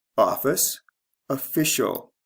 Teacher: the stress changes from first to second syllable